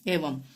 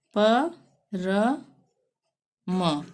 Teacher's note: अब यदि किसी शब्द के अंतिम अक्षर पर अनुस्वार होगा तब वहां पर उसका उच्चारण आधा म के रूप में होगा, अंतिम अक्षर पर।